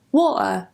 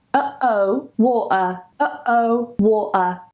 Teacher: But what you may hear is a lot of people saying water, and they glottalize it. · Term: glottal stop